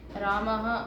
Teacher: ఇందులోని హ అన్న ధ్వని పూర్తిగా కాకుండా తేలికగా పలకాలి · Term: విసర్గ